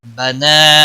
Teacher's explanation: نون کے اوپر کھڑی زبر ہے، 1 الف کے برابر کھینچ کر پڑھیں گے۔